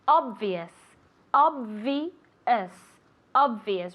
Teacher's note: Remember with that V sound, so you have to move your vocal cords.